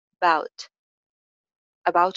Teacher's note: अबाउट का first जो syllable है यानी अब वो अनस्ट्रेस्ड है, उसकी आवाज बहुत कम आएगी